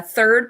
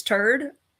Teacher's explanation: the accent where he doesn't say the TH sound at all